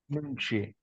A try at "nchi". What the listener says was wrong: Nchi. No, don't say nu. Nchi. Don't say nu. Just say nchi.